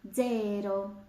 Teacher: на початку слова коли стоїть літерка дзета маємо звук ДЗ